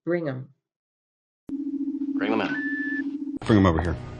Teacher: listen for the missing th sound in bring them